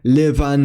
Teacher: a voiced bilabial fricative [β] medially after vowels